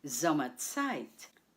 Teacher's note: The stress is on the first syllable, Sommerzeit.